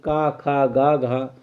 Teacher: आपको पता है कि क ख ग घ हमारे पास कंठ ध्वनि है